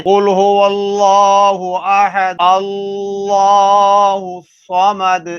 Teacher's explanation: زبر ہونے کی وجہ سے یہاں لام کو پر پڑا جا رہا ہے تو لفظ اللہ موٹا پڑا جا رہا ہے